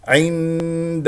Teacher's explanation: النون ساكنه بعد النون دال اخفاء بمقدار حركتين لان الدال من حروف الاخفاء ومرقق اذا الغنه تكون مرققه عند